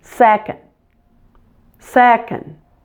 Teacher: the easiest of the ordinal numbers it has two syllables so make sure that you put the primary stress on the beginning of the word second the O in the last part is weak so don't · The O in the last part is weak, so don't pronounce it fully. And it might even help if you just pretend there is no vowel at all in that second syllable.